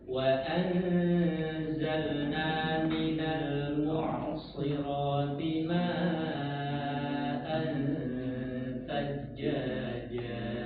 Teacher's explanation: perhatikan huruf ain, usahakan dia tidak terhenti suaranya.